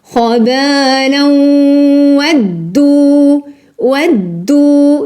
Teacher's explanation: خبالا إضغام بغنة خبالا ودوا ودوا دال شدة ضمة دوبل دال ودوا donc double dal. Le dal il est doublé, c'est normal parce qu'il porte une shadda.